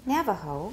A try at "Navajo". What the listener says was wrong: Good.